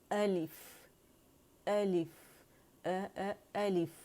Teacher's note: اس کا حمزہ جو ہے اقص الحلق سے ادا ہوگا